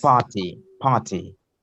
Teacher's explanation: Just T sound will be turning into D sound